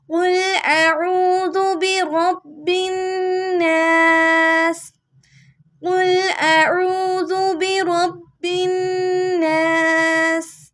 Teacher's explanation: word ویسے ناسی ہے، برب الناسی، وقف کرنا ہے ہم نے یہاں پہ، تو ہم اس کو ناس پڑھیں گے، زیر کو نہیں پڑھیں گے